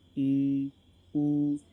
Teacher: इनके उच्चारण में हमारा मुख दोस्तों थोड़ा कम खुलता है आ की बजाय। आ में हमारा मुख पूरा खुलता है, परंतु बड़ी ई और बड़े ऊ में हमारा मुख कम खुलता है दोस्तों।